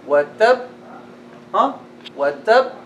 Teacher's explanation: the ba that is merged, or the letter that is merged, we don't apply qalqala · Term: mudghama